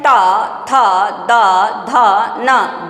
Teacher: ट थ द ध न दंत को छू रही है और अच्छे से छू रही है